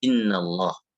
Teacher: Wa fakhimil lam min ismillahi, tebalkanlah lam apabila dia di lafzul jalalah